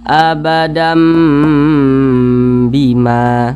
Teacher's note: didengungkan, suaranya ditahan 2 harokat atau kira-kira 2 ketukan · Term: iqlab